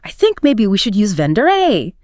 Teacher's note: your intonation nervously goes up at the end of the sentence, making it sound like a plea for validation. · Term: rising intonation